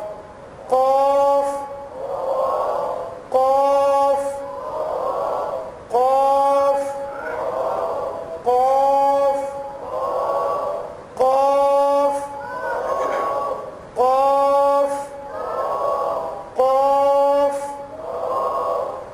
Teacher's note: عربی زبان میں اس کو کہتے ہیں لسان الصغیر، اردو میں اس کو کوا کہتے ہیں، کوا۔ وہ کوے والی جگہ سے 2 نقطوں والا قاف